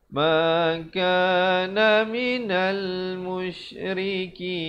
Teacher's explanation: Ra di sini jadi nipis